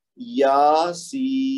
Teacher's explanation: یا کو 2 حرکت اور سین کو 5 سے 6 حرکت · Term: مد لازم